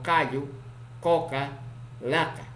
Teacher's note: Consonante K, oclusivo simple, posvelar, sordo, ocurre en posición inicial, medial y final